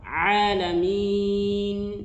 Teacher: Ha-nya perlu diperjelas alhamdulillahi rabbil alamin. Nah, untuk huruf ain itu jangan ditebalkan, bukan a. Alhamdulillahi rabbil alamin.